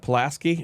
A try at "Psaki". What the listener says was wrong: Psaki, I think. The P is silent.